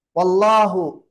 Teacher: அல்லாஹ்வுடைய லாம் இங்க வல்லினமாக உச்சரிக்க வேண்டும்